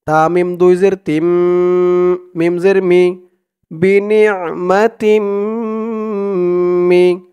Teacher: তা দিয়ে তাসদিদ ওয়ালা মিমকে ধরবে, এখানে ঈদগামে বাগুন্নাহ গুন্না হবে। তানবিনের পরে ঈদগামে বাগুন্নার 4 হরফের এক হরফ মিম আসছে তাসদিদ সহকারে।